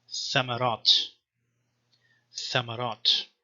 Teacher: just a voiceless interdental fricative, tha. So the letter is called tha, and you find it in words like thamarat.